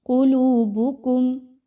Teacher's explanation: ثم قست، قاف موٹا حرف ہے، اس کو خوب موٹا کر کے پڑھیے۔ قلوبکم، لام واو پیش لو، واو مدہ ہے، 2 حرکات کے برابر اس کی ادائیگی رکھیں۔